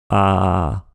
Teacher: la voix craquée, bizarrement traduite voix raclée ici, ça consiste à faire entendre une sorte de vibration en même temps.